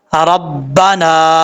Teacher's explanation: نون کے آگے الف ہے، ایک الف کی مقدار اس کو لمبا کر کے پڑھیں گے